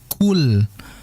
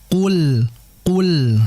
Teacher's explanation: jangan sampai ada udara yang keluar atau bahasa tajwid sifatnya adalah hames